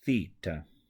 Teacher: it's the TH sound. However, it's a little bit more emphatic. The tongue is put on the bottom of the two front teeth